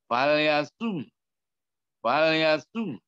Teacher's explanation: huruf ketiga dari belakang yang berharokat, hendaknya agak sedikit dihentakkan suaranya.